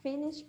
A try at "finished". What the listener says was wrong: But is finished with a T. Finished.